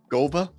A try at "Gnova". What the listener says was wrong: G is silent. It's GNOVA. But it's Nova.